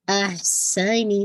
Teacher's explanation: سین whistling sound آنی چاہیے. نی کی کسرہ شارپ رکھیے گا.